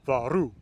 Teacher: Right, so ancestrally the forms wouldn't have been exactly this, but it would have been a situation like vas, varu, right, where that past tense plural has the emphasis on the second syllable, and that's what indirectly leads the S to become an R.